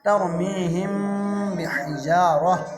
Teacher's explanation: تر کے را کو موٹا پڑھیں گے کیونکہ را ساکن سے پہلے زبر ہے · ہم کے میم پر اخفا مع الغنہ ہوگا کیونکہ میم ساکن کے بعد با آیا ہے